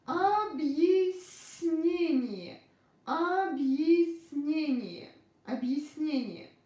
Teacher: n is soft here, so we pronounce s soft.